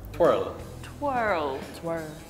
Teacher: Where England kind of skips over the R sound, we go full on twirl.